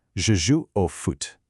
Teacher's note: Notice how your lips kind of have to round a bit more for that foot sound.